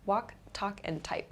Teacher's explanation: So the ending sounds are k, k, and p here. So these are called unvoiced sounds.